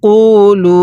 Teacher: কফের মধ্যে হালকা টান দিবেন লামের মধ্যে তিন আলিফ টান দিবেন